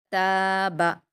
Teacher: تا پر الف مدہ ہے، اس کو 2 حرکات کھینچ کر پڑھیں گے. با پر حرکت ہے، اس کو جلدی پڑھیں گے.